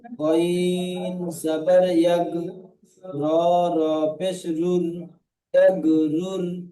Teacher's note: রয়ের উপরে পেশ আছে, তাই রটিকে পুর করে দিতে হবে। সাকিনের ডান দিকে পেশ এসেছে, তাই সাকিন ওয়ালা রকে পুর পড়তে হয়।